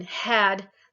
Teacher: And then the glottal fricatives, one of my favorite fricatives, one of my favorite areas, the glottal, back there at the very back, behind the velum at the glottis. If you feel back where you're making that kind of sound in had, that's a glottal fricative.